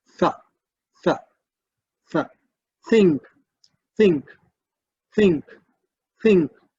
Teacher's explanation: But here, when you think of tha, tha, you'll find your tongue touch the upper teeth